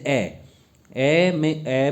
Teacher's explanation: ए में बोलने में जीभ का मध्य भाग का प्रयोग होगा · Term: मध्य स्वर